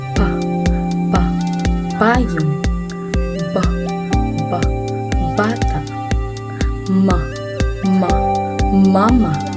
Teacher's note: Parehong labi ang nagtatagpo upang pigilan o harangan hangin. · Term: panlabi